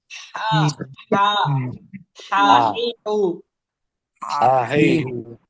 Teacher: প্রথম হা এটা হল একদম গলার মাঝখান থেকে হবে আইনের মতন হাউ >> হা >> আর পরেরটা হল হা একে বলা বড়